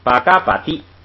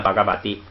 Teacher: 就是巴嘎巴蒂都不发送气，都发不送气